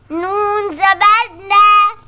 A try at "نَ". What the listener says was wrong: اسے نون زبر نہ پڑھنا ہے، نون الف زبر نا نہیں پڑھنا.